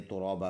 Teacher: ترا بادو زبر بن ترابن رکیں گے اسٹاپ کریں گے تو دو زبر میں سے ایک زبر پڑھیں گے ایک کو سائلنٹ کریں گے ترابا بن جائے گا فل آیات کو ہم نے ایسے پڑھنا